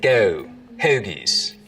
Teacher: diphthong starts to move forwards in the mouth